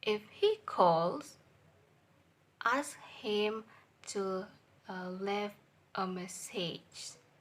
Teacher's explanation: if is a flat voice level, and calls is high voice level, and ask is flat voice level, and message is low voice level. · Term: combining intonation